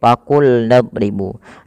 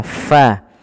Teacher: ketika melafalkan fa itu bibir kita tidak terlalu rapat dan ada rongga yang kita keluarkan untuk mengeluarkan nafas kita, fa, agar suara fa-nya terdengar lebih baik. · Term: huruf F